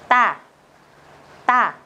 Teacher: các bạn sẽ đọc gấp đôi lên, căng gấp đôi lên nhưng không bật hơi. Chính xác từ này chính là chữ tờ trong tiếng Việt đấy ạ.